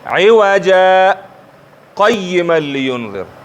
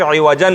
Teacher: د زور تنوین په الف باندې بدلیږي · د سکتې او د وقف په دواړو صورتونو کې نو عوجا ویلی کېږي. یو غلط فهمي ځینې خلکو په منځ کې شته، هغې د سکتې په وخت عوجن وایي. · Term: سکته